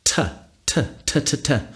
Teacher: using the tongue and the alveolar Ridge that's that bony bit above your front teeth tatata so there are all different kinds of plosives that we